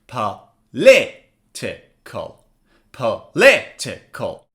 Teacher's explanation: Stress is on the second syllable. So the second syllable should be read louder than the others. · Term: word stress